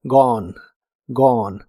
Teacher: se pronuncia sin la e del final y la o es como una o profunda